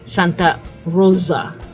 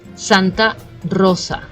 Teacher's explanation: But it shouldn't be perhaps as strong if you cannot do it, but definitely that S, it should not be pronounced as a Z